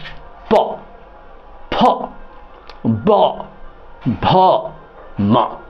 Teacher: प ओष्ठ मिला रहे हैं